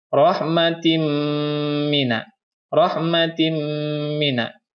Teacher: Tanwin bertemu dengan huruf mim, maka hukumnya adalah idgham bigunnah. Dan cara membacanya adalah langsung dimasukkan ke huruf mim.